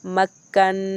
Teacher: کاف کو بھی 2 دفعہ پڑھ رہے ہیں، نون کو بھی 2 دفعہ پڑھ رہے ہیں۔ میم کاف زبر مک، کاف نون زبر کن، نون کھڑی زبر نا، مکناہا میم پیش ہم، مکناہم۔ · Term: تشدید